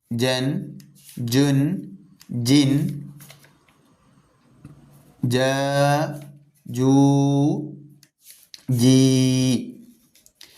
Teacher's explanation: നാവിൻ നടുവിന് മേലെണ്ണാക്കിൽ ചേർത്തു പറഞ്ഞാൽ ജീമായി.